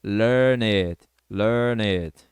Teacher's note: O N junta com it, ficando learn it. Então, fica and I wanna learn it.